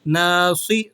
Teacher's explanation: صاد کو آپ نے موٹا ادا کرنا ہے، یہ موٹے حروفوں میں سے ہے۔